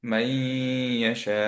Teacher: মাই ধরে রাখলাম বিকজ হচ্ছে নুনের সাথে মার্জ হয়ে গেছে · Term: গুণনা